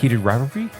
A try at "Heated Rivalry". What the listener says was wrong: There is an R in there.